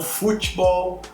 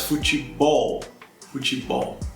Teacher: mas a tônica está no ball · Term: sílaba tônica